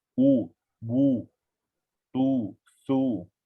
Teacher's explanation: kita kena munculkan mulut. U, bu, tu, su. Kalau tak munculkan mulut dia jadi kurang sifat dia. Jadi tak lengkap, tak sempurna sebutan tersebut.